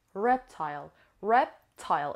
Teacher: It has two syllables and the stress is on the first syllable.